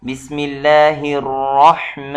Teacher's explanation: را یہ تفخیم کیا جاتا ہے، یعنی موٹا پر کر کے پڑھا جاتا ہے، اور آگے ح اس کا اپنا آواز حلق سے ہونا چاہیے۔